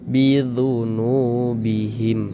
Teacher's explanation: huruf yang memiliki tanda baca dhammah ini dibaca panjang, sehingga nu dibaca panjang. Mad tabi'i panjangnya 2 harokat